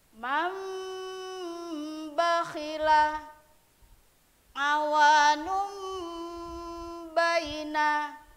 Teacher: Ada huruf ba yang ketika bacanya itu jadi mim, itu disebut membalik. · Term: iklab